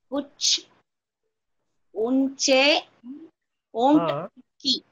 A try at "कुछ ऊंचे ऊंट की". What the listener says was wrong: Right. Perfect.